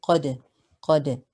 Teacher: Here we have qaf with a fatha. It is heavy on the second scale. The dal is a qalqala letter because it has a sukoon.